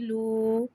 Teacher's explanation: واو ساکن سے پہلے پیش آ رہا ہے، واو مدہ ہو رہا ہے، لہٰذا واو مدہ کو ایک الف یعنی 2 حرکات کے برابر کھینچ کے پڑھیں گے اور پیش کو ہونٹوں کی گلائی کے ساتھ ادا کر کے پڑھیں گے. لام واو پیش لو. · واو کو ہونٹوں کی گلائی کے ساتھ ادا کر کے پڑھیں گے. واو ساکن سے پہلے پیش آ رہا ہے، واو مدہ ہو رہا ہے، لہٰذا واو مدہ کو ایک الف یعنی 2 حرکات کے برابر کھینچ کے پڑھیں گے اور پیش کو ہونٹوں کی گلائی کے ساتھ ادا کر کے پڑھیں گے.